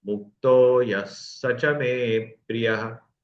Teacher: गया मु मुक्त यह मुक्तो हो गया यहां पर विसर्ग है मुक्त विसर्ग और उसके बाद य आने के कारण विसर्ग का ओ हो गया